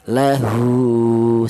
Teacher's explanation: huruf ha ini dipanjangkan satu alif atau dua harakat atau dua ketukan